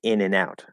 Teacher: we'll actually add an e sound and say in and out